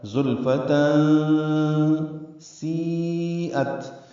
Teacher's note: زلف میں زا کو تیز صفیر کی آواز سے ادا کریں گے اور لام سے ملائیں گے، فا کو جلدی پڑھیں گے۔ تنوین کے بعد سین آنے کی وجہ سے اخفا ہے، زلفتن سیئت، یا مدہ کے بعد حمزہ پھر یا کی شکل میں ہے لیکن حمزہ ہے ایک ہی کلمے میں، جس کی وجہ سے مد متصل ہے۔